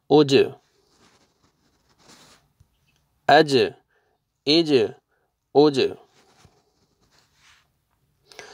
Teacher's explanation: جیم جو ہے نا وہی حروف قلقلہ میں سے ہے، ڈبل ساؤنڈ آئے گا. حمزہ فتحہ، جیم سکون، اج.